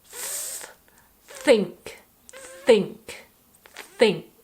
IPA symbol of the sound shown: θ